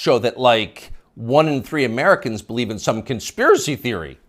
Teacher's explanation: You'll notice the upspeak, the rising inflection at the end of the sentence